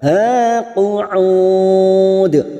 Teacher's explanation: mad arid li sukun 4 harokat kita panjangkan dan ujungnya kita pantulkan qalqalah kubra